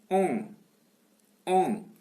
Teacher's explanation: nasale, postérieure, mi-ouverte et arrondie